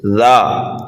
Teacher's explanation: ذا کو ایک الف کے برابر کھینچ کر کے پڑھیں گے